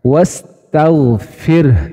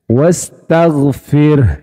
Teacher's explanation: Jadi bunyi hak sukunnya tetap kedengaran jelas.